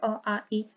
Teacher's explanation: जैसे निर्नुनासिक हो गया अ, आ, ई, देखिए नाक से कोई हवा पास नहीं हो रही, सिर्फ मुंह से हमारी निकल रही है ध्वनि